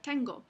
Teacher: si la N ocurre antes de una consonante velar, por ejemplo, K o G son consonantes velares, se toma el punto de articulación de la siguiente consonante